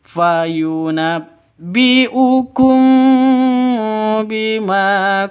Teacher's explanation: Ikhfa Syafawi hukum mim mati ikhfa SFA syafawi dengung funabbiukum Bima Ma panjang dua ketukan karena ada Alif